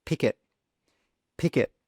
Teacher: So that final k sound in pick is a consonant, and the first sound in it is a vowel sound. So those two sounds join together.